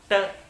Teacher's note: ज़बान जो है ऊपर एल रिज को जाके टच कर रही है, तालू को टच कर रही है, ट। तो ये जो है ये कॉन्सोनेंट है।